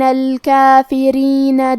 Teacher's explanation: یہاں را کے نیچے زیر ہے تو ہمیں را کو پتلی آواز میں پڑھنا ہے